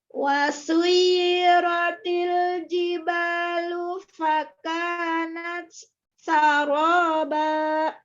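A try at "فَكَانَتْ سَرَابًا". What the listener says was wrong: Fakan, di situ kan ada hamas, lalu ada sin. Hamasnya jangan terlalu kuat. Ditaknya. Fakanat saroba. Seolah-olah di sin itu ada tasjid. Fakanat dari fakan. Ya, tetap ada hamas tapi sedikit ya. huruf ta dengan huruf sin dia hampir mendekati. Sebenarnya sih atas sama bawah beda makhorijul huruf.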